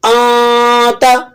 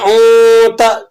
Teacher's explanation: اخفا کی ادائیگی کے اندر آپ دیکھیں گے کہ آپ کی زبان اوپر تالو کے ساتھ نہیں چپکے گی.